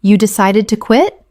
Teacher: Utilizing a rising intonation, this invites them to elaborate on their reasons.